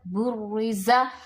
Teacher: اب چونکہ را کے اوپر تشدید ہے تو را کو ہم نے 2 دفعہ پڑھا ہے